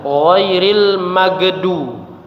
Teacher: huruf gha ketika sukun dibaca dengan qalqalah ya, dibaca dengan dipantulkan.